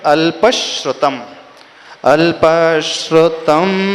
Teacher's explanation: अल्प के बाद एक्स्ट्रा स्लाइट स का उच्चारण आएगा क्योंकि आगे स है